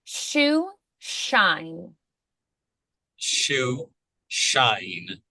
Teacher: post-alveolar sounds where the tongue touches just behind the alveolar ridge